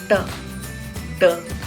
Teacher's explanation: टंग टिप को एल्वियुलर ridge, जो कि टीथ के पीछे एक खुरदरा एरिया होता है, उसको एल्वियुलर रिज कहते हैं, उस पर टंग को टच करना है और फिर ट और ड साउंड बोल सकते हैं हम।